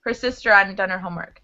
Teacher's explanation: we tend to drop the H when we're pronouncing. If there's a vowel before it, it can turn into a W sound.